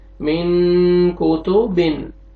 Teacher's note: نون ساکن کے بعد حروف اخفا میں سے کاف آ رہا ہے، ناک پہ آواز لے کے جائیں گے